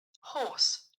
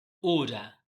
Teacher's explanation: More lips rounding than o. O and then hold the sound quite longer than in the sound o. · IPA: /ɔ:/